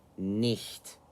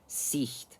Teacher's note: No, it makes a sound. So a harsh aspiration, often rather throaty.